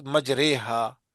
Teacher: جی جی امالہ، امالہ کے معنی جھکانا، یعنی الف کو یا کی طرف اور اس سے پہلے زبر کو زیر کی طرف جھکانا